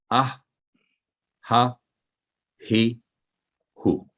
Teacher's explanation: ये हलक के दरमियानी हिस्सा से यह हरफ अदा होता है और हल्की हवा मुंह से निकलती महसूस होती है।